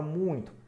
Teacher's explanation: temos o u e o i na mesma sílaba fora da da sílaba o i e o u são semivogais